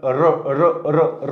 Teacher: काय होईल बघा. र र र र म्हणताना जीभ एकदम तिथं स्थिर राहत नाही, आतमध्ये कंपन होतात र ची.